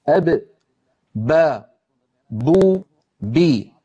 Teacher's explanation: با دونوں ہونٹوں سے ادا ہوتی ہے، اس طرح کہ دونوں ہونٹ آپس میں ملتے ہیں۔ زبان کو دیکھیں، جب با ادا ہوتی ہے تو زبان بالکل سکون میں ہوتی ہے۔ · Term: با کا مخرج